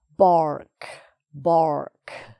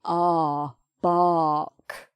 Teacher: r sound and then the k sound at the end so this r is not pronounced it's just in the spelling · an r sound an open r like this ah bark and we don't even try to do an r r sound it's just bark so you've got the b and then an r sound and